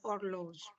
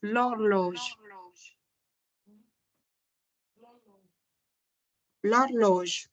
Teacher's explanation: the H is mute. We do not read the H. We just read horloge.